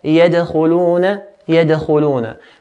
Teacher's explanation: when dal has an original sukun, we make a bouncing echo sound. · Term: qalqala